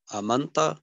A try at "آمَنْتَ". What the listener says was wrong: آمنتا آمنتا کو لمبا کر کے جی